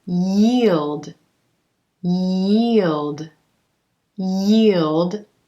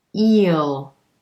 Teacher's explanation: how that tongue is raising up in the middle for the y